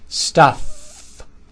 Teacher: Final sound is f. Bottom lip touching the upper teeth, pushing air out.